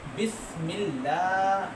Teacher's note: بسم اللہ، دیکھیں پھر دیر ہے تو اللہ کا نام باریک کر کے پڑھیں گے